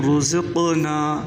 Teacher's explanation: यहाँ पर क़ाफ़ जो है क़लक़ला भी होगा, क़ाफ़ को मोटा करके भी पढ़ना है।